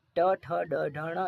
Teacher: मूर्धन्य वर्ण जो जबड़े के ऊपर वाले हिस्से से बोला जाए